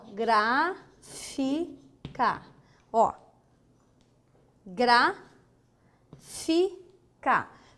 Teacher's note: a proparoxítona é a terceira sílaba de trás para a frente mais forte